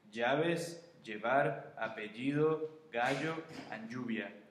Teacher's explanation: notice how you don't say like L, you say the Y sound whenever you pronounce them